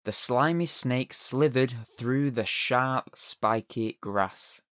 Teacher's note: It's a series of words in a sequence that contain the same soft consonant sound. You tend to find that these kind of sounds create something of a hissing sound.